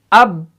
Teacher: होंठ बंद रखे हमने, होंठों को नहीं छोड़ा हमने। अगर हम होंठों को छोड़ देंगे ना तो कलकला भी इसके साथ अदा हो जाएगा।